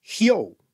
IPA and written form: hjo: (hēo)